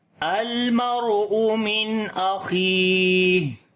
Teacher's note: ہا کے اوپر سانس جاری کریں گے، صفت ہمس آ جائے گی۔ تو پڑھیں گے المرء من اخیہ اور پیچھے والے کے ساتھ ملا کر پڑھیں گے تو یوم یفر المرء من اخیہ وامہ وابیہ۔